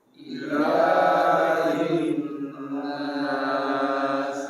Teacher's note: Ilahnya mat tabi'i, tidak boleh lebih dari 1 alif atau 2 harakat